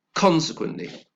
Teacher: how many syllables is that consequently like four syllables the stress is on the first syllable and so therefore again we have some unstressed syllables this time